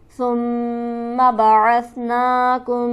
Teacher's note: ثم کے میم پر میم مشدد ہے، غنہ سے پڑھا جائے گا. بعثنا میں نون کو ہم کھینچیں گے ایک الف کے برابر کھڑی حرکت کی وجہ سے.